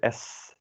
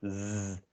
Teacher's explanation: if you hold your finger here s you don't vibrate your voice box versus the z z you vibrate your voice box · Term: unvoiced consonants